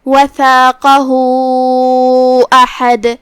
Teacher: یہاں بھی مد صلہ کبرا ہے تو ہم اپنی آواز 2 سے 4 مد کے برابر لمبی کریں گے